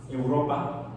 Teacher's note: O, por ejemplo, el diptongo EU, en español es EU, como en Europa, que se escribe igual en alemán, Europa, pero el diptongo se pronuncia diferente. El diptongo EU se pronuncia OI.